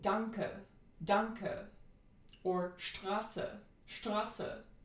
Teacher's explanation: a short, mid, central, unrounded, reduced vowel. So it's not lax or tense because there is no contrast, because by definition this vowel only occurs in reduced syllables. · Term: German schwa